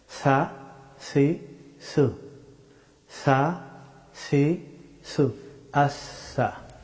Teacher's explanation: সা হরফটি উচ্চারিত হয় জিহ্বার অগ্রভাগ এবং সানায়া ওলিয়া, সামনের দুই দাঁতের অগ্রভাগ। এখান থেকে সা হরফটি উচ্চারিত হয়।